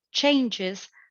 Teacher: changes sounds the same used both as a noun and as a verb it has the stress on the same syllable on the first one